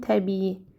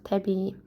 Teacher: Yenə burada da i-nin biri düşəcək, yerdə qalan uzun tələffüz olunacaq.